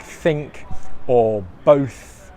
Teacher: the th sound where your tongue is in between your teeth